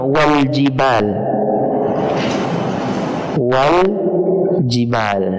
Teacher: Dia hamzatul wasal, yang mana alif ketika berada di tengah kalimat tidak dibaca